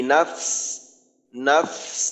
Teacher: ফার উচ্চারণ শেষে সিনের মাখরাজে গিয়ে একটু বাতাস বের করে দিতে হবে।